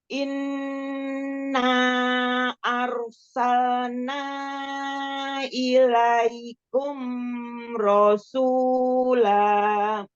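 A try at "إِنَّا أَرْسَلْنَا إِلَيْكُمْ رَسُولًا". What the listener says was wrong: Jangan kepanjangan mim sukunnya. Ilaikum rasula. Mad jaisnya panjangkan 4 atau 5 harokat.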